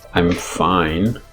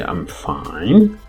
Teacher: For example, in English, I'm fine, just falling intonation. And then if I say I'm fine, that's the question interrogative intonation. I guess you need to apply that at the syllable level, not at the sentence level.